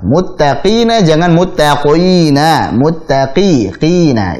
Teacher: qafnya ketika kasrah jangan terlalu tebal